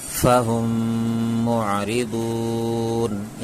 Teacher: میم ساکن کے بعد میم آئے تو میم کو میم سے ملا کر گنہ کے ساتھ پڑھیں گے، اسے ادغام شفوی کہتے ہیں۔